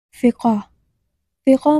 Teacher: عربی کا حرف فا بھی ایک اہم حرف ہے جس کی صحیح ادائیگی میں ہونٹوں کا استعمال ضروری ہوتا ہے۔ یہ حرف فا کی آواز نکالنے کے دوران ہونٹوں کو آدھے فاصلے پر کھولا جاتا ہے اور ہوا کو ہلکے سے نکالنے دیا جاتا ہے